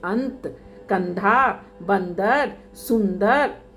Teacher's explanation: इसका उच्चारण नाक से होता है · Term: अनुस्वार